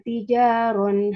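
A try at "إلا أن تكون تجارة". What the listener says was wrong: tijaratan bukan tijaron satu huruf ketinggalan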